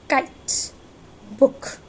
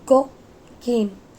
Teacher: The difference between k and g sound is k is voiceless and g is voiced.